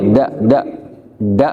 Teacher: Huruf D-nya orang Indonesia ujung lidah bertemu dengan langit-langit. Tapi kalau dalnya d-nya orang Arab, ujung lidah bertemu dengan gusi atas. Ujung lidah bertemu dengan awal gigi seri atas.